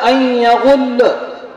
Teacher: Number 1، لام کو بہت زیادہ کھینچ دیا جاتا ہے، جیسے این یغل۔ نمبر 2، لام میں قلقلے کی آواز پیدا کی جاتی ہے